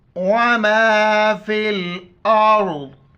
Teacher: را سے پہلے الف کے اوپر زبر ہے، را کو موٹا پڑھیں گے